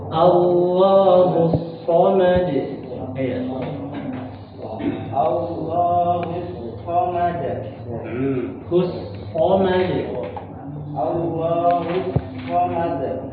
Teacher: Jadi huruf shad Pak, konsentrasi ujung lidah di gigi seri bawah. Tapi dia suaranya itu mendesis